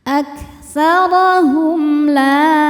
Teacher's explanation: Hum ada idhar syafawi sebab mim sukun menghadapi huruf selain mim atau ba ya, yaitu lam. Dibacanya jelas